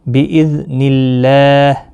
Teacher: اللہ کا لام زیر کی وجہ سے باریک پڑا جائے گا